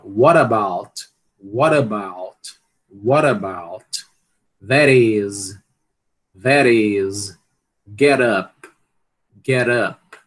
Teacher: Você pode fazer esse fenômeno, né, de t ou d se tornarem r, acontece, e ele é muito recorrente mesmo, né? No inglês americano, e pode acontecer tanto dentro de uma palavra, né, quanto em fronteira de palavra, ou seja, quando uma palavra termina em t ou d e a outra palavra começa com vogal.